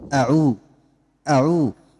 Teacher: Jangan dipanjangkan huruf hamzahnya.